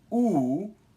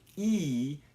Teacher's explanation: with oo, your lips are round, and with e, you can see your lips spread out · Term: lip rounding